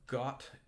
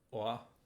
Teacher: O is an sort of like English got. Keep it nice and rounded, a sort of ah.